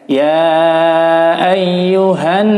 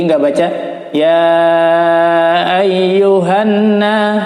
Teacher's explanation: Ya ayyuhan, agak ditahannya 4 ketukan. Jadi nggak baca ya ayyuhanna, tapi ditahan di sini. Ya ayyuhan nasu, pakai ain jadi ditekan. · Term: gunnah nun